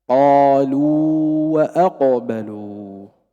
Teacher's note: هذه الواو الأولى لا تدغم في الواو الثانية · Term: حرف مد